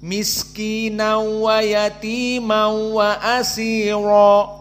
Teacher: Nun Sakinah melebur kepada wau namun tanpa gunah sehingga karena tanpa gunah tidak ada dua harakat dan tidak berpindah makhrajnya kepada khaisyum ataupun hidung maka ini qiraah